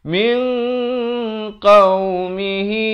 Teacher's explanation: Di ikhfa' hakiki ini dibacakan dua harakat. Disamarkan dan juga ditebalkan kerana qaf merupakan huruf isti'la.